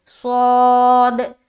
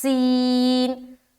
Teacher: صاد اور سین جو ہے نا سی ٹی کی طرح ادا ہوتے ہیں، لیکن فرق یہ ہے کہ صاد کو ہم موٹا ادا کرتے ہیں